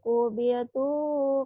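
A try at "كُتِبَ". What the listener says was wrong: Kubita, kutiba. Kebalik, kebalik baknya ya. Kubita bukan kutiba, kutiba ada lagi. Kutiba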